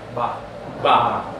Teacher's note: patach, and it's a medium ah sound